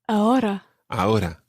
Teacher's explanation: the R in ahora isn't really rolled. It's more like a flick that happens somewhere just above your teeth.